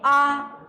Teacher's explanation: विवृत स्वर यानी पूर्ण रूप से खुला